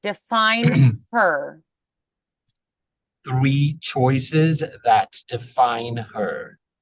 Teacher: make sure the H there because it is unvoiced make sure that's very clear um hit it a little bit harder with the air Define her three choices that Define her excellent four dreams she